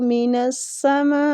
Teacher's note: من السماء میں جو مد ہو رہی ہے نا، مد واجب متصل ہو رہی ہے، اس کو کھینچنے کی مقدار بھی 4 حرکات ہے